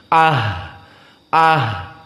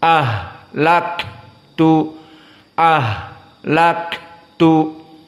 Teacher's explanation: hams maka harus keluar Ha nafas dan keluar suara sehingga dia menjadi sedikit panjang